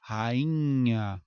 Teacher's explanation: Então o NH serve para nasalizar essa vogal.